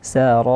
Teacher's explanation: di sini mad wajib muttasil dia empat atau lima harakat dan ra yang terakhir ditipiskan Kenapa begitu kerana sebelumnya ada ada huruf yang berharakat kasrah Ir